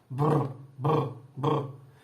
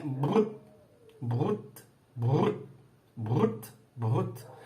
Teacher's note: Então, ao produzir, por exemplo, de uma língua estrangeira, vamos supor, eu tenho línguas que tem uma vibrante, é um trio, né? Da mesma forma que eu faço rrr, aqui no alvéolo, na ponta da língua, eu faço com os 2 lábios.